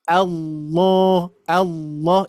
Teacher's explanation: Jadi lamnya jadi tebal.